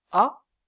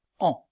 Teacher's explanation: Prenons 2 exemples, la voyelle orale A et la voyelle nasale AN. Dans le cas de la voyelle orale A, l'air passe par la bouche, on dit aussi la cavité buccale. Dans le cas de la voyelle nasale AN, l'air passe par la bouche et par le nez, on dit aussi la cavité nasale. · dans le cas de la voyelle nasale en l'air passe par la bouche et par le nez